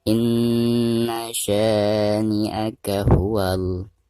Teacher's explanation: Nah, ketika membaca sya maka di sini harus dipanjangkan 2 harokat karena ada harakat fathah sya ya, lalu berhadapan dengan alif sukun seperti ini, maka dihukumi mad tabi'i dan dibacanya 2 harokat.